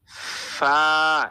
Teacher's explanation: মোট কথা হচ্ছে আমাদের সামনের উপরে যে দাঁতগুলো রয়েছে সেই দাঁতগুলোকে নিচের ঠোঁটের সাথে লাগিয়ে রাখবো। এরপরে বাতাস বের করব।